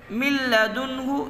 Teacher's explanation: ادغام بلا غنہ کر کے پڑھیں گے، یعنی کہ بغیر غنہ کے ادغام کریں گے۔